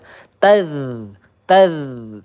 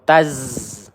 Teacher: ujung lidah bertemu dengan gigi seri yang atas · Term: dzal